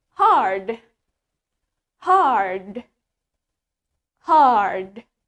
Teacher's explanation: in American accent, we pronounce the R clearly. Tapi di aksen Amerika, kita mengucapkan R-nya dengan sangat jelas. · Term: R sound